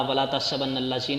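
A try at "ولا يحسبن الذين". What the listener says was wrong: نہیں تحسا نہیں، دیکھ لیں یہ غلطی کر رہا ہے آپ کا کتاب والا.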